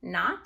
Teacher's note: It's a closed syllable. My T is closing in my vowel, making it short, so I mark it with a brev and a C.